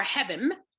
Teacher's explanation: the N is even softened to an M here for hebim